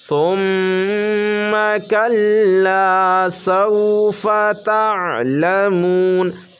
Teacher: ثم میم پر جب تشدید ہو تو غنہ ہوگا